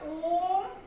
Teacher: ओम बोलने में दीर्घ स्वर से भी ज्यादा लग रहा है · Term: प्रलुप्त स्वर